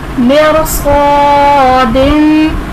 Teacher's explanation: مرصادن میں را ساکن ہے، اس سے پہلے زیر ہے، یہاں پر را باریک نہیں پڑھی جائے گی. کیوں کہ اگر را ساکن ہو اس سے پہلے زیر اصلی اسی کلمے میں ہو اور اس کے بعد حروف مستعلیہ ہو تو را پر پڑھا جائے گا.